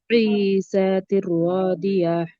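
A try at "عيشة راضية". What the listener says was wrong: শিন উচ্চারণটা ভুল হয়েছে। আইশাতির রাদিয়া।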